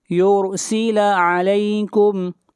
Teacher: یرسل نون ساکن کے بعد حروف یرملون میں سے یا ہے، ادغام مع الغنہ ہوگا اور را کو موٹا پڑھیں گے. را سے پہلے پیش ہے